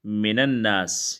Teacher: اگر پہلا ساکن من کا نون ہو تو زبر دیں گے